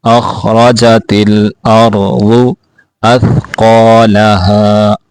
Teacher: اخرجت الارض اثقالها، تھا کو واضح کر کے پڑھیں گے، قاف کو بھی موٹا کر کے پڑھیں گے